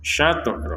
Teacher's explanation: Huruf to ini juga harus dipantulkan. Syatro. Jadi sekedar pantulan, jangan sampai berlebihan atau kurang.